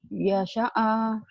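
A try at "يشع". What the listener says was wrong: Nggak ada yang panjang. Yasha'a. Kayak orang marah ya. Yasha'a.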